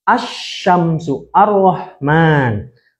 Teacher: alif lam Syamsiah itu lamnya nggak dibaca lah, seakan-akan nggak dibaca. Langsung ke huruf selanjutnya.